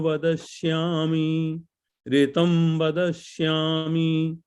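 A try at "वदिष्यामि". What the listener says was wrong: Vadishyami. Vadishyami. not Vada, Vadishyami.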